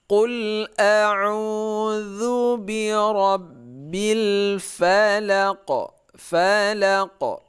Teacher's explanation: Jadi Al-Falaq ini kalau kita waqaf maka terjadi qalqalah.